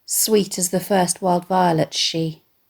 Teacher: The poet uses sibilants, repeated S sounds throughout this short stanza, to communicate his almost breathy appreciation of his bride's physical beauty.